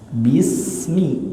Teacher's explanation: Huruf sa harus sofir, harus berdesis. Huruf sa gigi seri kita rapat.